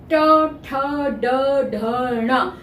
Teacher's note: ट ट जो है वो तालू से थोड़ा आगे और दांतों के पीछे वाला जो भाग होता है उसको मूर्धा बोलते हैं यानी मुख जो है मुख के अंदर ऊपर वाला भाग मूर्धा